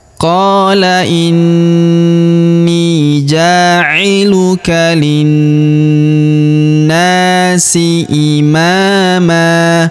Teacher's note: huruf na kita panjangkan dua harakat karena terdapat alif di depannya